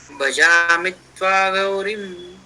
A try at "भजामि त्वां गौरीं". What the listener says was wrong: भजामि त्वाम, अनुस्वार है ऊपर,